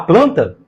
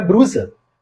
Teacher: Quando o fonema lê está precedido de consoantes oclusivas como P, B, T, D, Q e G, ou precedido de consoantes fricativas como F e V, o falante tende a escorregar e pronunciar um R no lugar do L.